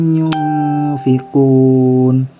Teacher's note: Ito ay nun na bumangga ng fa. Ito ay ikhfa.